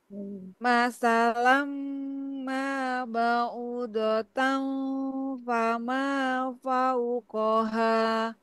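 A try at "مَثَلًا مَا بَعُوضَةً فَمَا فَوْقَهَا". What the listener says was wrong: Nah, u-nya kurang. Masalam ma ba'udatan fama fauqaha.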